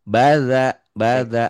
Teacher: Danya agak agak agak kayak digigit ya lidahnya